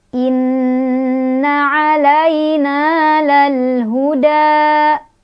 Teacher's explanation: Inna di sana ada hukum gunnah, gunnah musyaddadah karena ada nun yang bertasydid. Cara bacanya didengungkan. Inna 'alai ada harf lin karena ada ya sukun didahului oleh huruf berbaris fathah di lam.